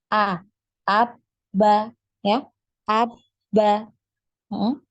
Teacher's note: makhraj dari huruf ba Ini adalah di bertemunya ya bertemunya kedua bibir ya dalam keadaan tertutup bibir atas dan bibir bawah